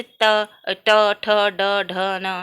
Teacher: मूर्धन्य मतलब तालु के ऊपर के भाग को बोलते समय जो वर्ण स्पर्श करते हैं उसे मूर्धन्य बोलते हैं